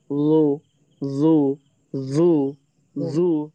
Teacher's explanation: আমরা জিহ্বার আগাটা উপরের দাতের নিচে নিয়ে লাগিয়ে পড়ব।